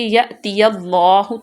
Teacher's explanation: اللہ کی لام کو پر پڑھیں گی کیونکہ اس سے پہلے زبر ہے